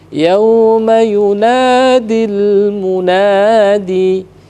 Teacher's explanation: jadi sempurnakan dulu sukun atau matinya huruf lam itu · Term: sukun lamnya